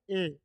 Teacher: ए का उच्चारण स्थान क्या होता है कंठ और तालू दोनों होता